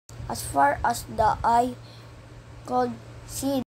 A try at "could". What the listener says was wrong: the learner pronounced the word could as called.